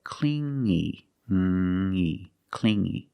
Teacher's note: You hear the sound only the nasal sound here. No g